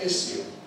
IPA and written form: ˈɪsjuː (issue)